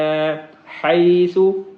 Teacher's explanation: روغا دن حیث شئتما، حیث، یہاں پہ ہا جو ہے یہ حلق والی ہا ہے، اور سا ہے اس کو باریک پڑھتے ہیں، دونوں دانتوں کے درمیان میں یا اوپرلے دانتوں کے پیچھے زبان لگا کے وہاں سے اس کا مخرج نکلتا ہے